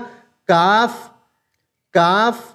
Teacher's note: ऊपर एक सूसा है जब हम उसको अदा करेंगे तो ये हम अपनी जबान की जड़ बिल्कुल तालू में मिलाएंगे लेकिन यह थोड़ा सा आगे से हम मिलाएंगे